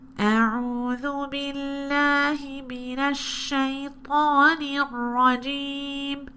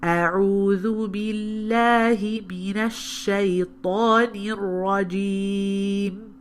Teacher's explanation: only when I was saying a noon or a mim did you hear this sort of nasal sound trying to come out of the khayshum.